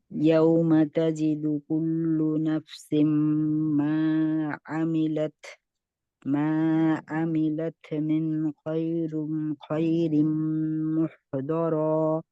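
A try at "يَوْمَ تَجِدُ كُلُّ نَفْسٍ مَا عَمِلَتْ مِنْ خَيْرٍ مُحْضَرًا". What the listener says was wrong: মাশাআল্লাহ, এই যে ধরতে পারছেন, এটাই আপনার মানে আগাইছেন, যে এটাই বোঝা যাচ্ছে যে আপনি ভুল করে সাথে সাথে ধরতে পারেন।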